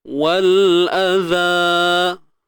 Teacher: Hamzah dari atas ni satu harakat ni, hamzah ni tuan-tuan, bukan 2, satu sahaja.